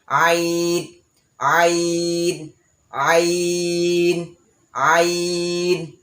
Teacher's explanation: আইন উচ্চারণ করার সময় হলকের মধ্যখান, অর্থাৎ হলক হচ্ছে গলা, আমরা যেটাকে সহজে বুঝি গলা। তো গলার মধ্যখান থেকে আইন আসবে